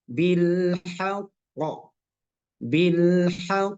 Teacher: pantulannya seperti ini misalnya bilhaqqi maka cara membacanya adalah bilhaqo bilqq jadi ada jeda sedikit untuk menampakkan sifat atau tanda tasdid